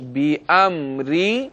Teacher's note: اور میم ساکن ہے، یاد رکھیے گا کہ میم بھی حروف قلقلہ میں سے نہیں ہے، اس لیے اس میں بھی لوٹتی ہوئی آواز نہیں آئے گی۔ اس کے بعد را کے نیچے زیر ہے، را کو باریک پڑھیں گے